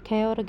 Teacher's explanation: के उच्चारण में सांस की मात्रा अधिक लगानी पड़ती है, इसलिए इन्हें महाप्राण व्यंजन कहते हैं